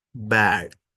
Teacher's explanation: So overlap, the tongue begins to lower for A while the lips are still closing for B. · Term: co-articulation